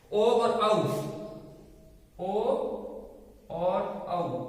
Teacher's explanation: ओ का उच्चारण और औ का उच्चारण कंठ प्लस ओष्ठ से होता है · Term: कंठोष्टम